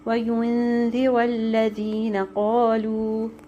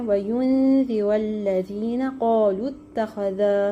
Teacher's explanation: اگر ہم نے وقف نہیں کرنا تو ہم لام کو ڈائریکٹ تا سے جوڑ دیں گے۔ یہ بات یاد رکھنی ہے، حرف مدہ کے بعد اگر شدہ آ رہا ہو تو حرف مد نہیں پڑھا جاتا، ٹھیک ہے۔